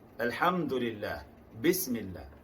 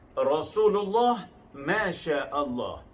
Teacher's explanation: apabila didahului oleh baris bawah dibaca tipis, alhamdulillah, bismillah. Apabila didahului oleh baris atas dan depan dibaca tebal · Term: lam jalalah